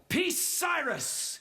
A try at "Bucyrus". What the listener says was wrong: No, Bucyrus. No, Bucyrus. It's B.